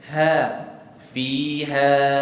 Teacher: huruf Ha ni dia tak tebal dia nipis jadi bila dia nipis kita baca ha fiha sebut fiha fiha